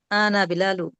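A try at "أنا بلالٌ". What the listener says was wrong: এটা টান হবে না। আনা বিলালুন, আনা বলুন তো আনা বিলালুন।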